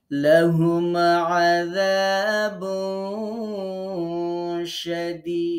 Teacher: এই যে তানবিনের নুনটাকে আমরা যে গোপন করে পড়লাম, এটার নাম ইকফা।